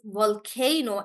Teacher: In volcano, guys, we stress on K